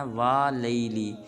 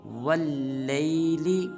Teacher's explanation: بعض مسلمان پڑھ دیتے ہیں والیلی، یہ بالکل غلط ہے۔ واو کو لام مشدد کے ساتھ ملائیں گے اور پڑھیں گے واللیل اذا۔